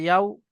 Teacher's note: ওয়াও সাকিনের ডান দিকে জবর এসছে, এটা হলো ওয়াউলিন, ওয়াউলিনকে নরম আওয়াজে তাড়াতাড়ি পড়তে হয়, টান দেওয়া নিষেধ।